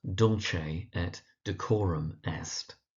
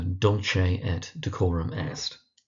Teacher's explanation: Emphasis on the dull and the core